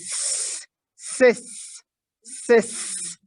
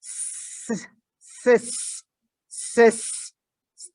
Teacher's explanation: The beginning sound, the tip of the tongue rises, the air escapes with hissing sound. So this is like, it's like the sound of the wind.